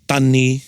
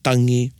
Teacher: drop the g the ng sound and there'll just be the n sound